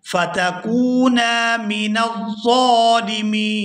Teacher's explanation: ظا کو کھینچ کر ادا کریں گے کیونکہ اس پر کھڑی زبر ہے، اور آخر سے نون کو وقف کی وجہ سے ساکن کر دیا جائے گا، اور یہاں نون ساکن ہونے کی وجہ سے مد ہوگی تو اس کو کھینچتے ہوئے پڑھیں گے من الظالمین۔